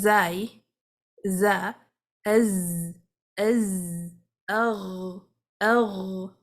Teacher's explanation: you can see there is a high voice there's no breath flowing with it · there won't be a breath flowing with those letters there would be actually a loud sound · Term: jar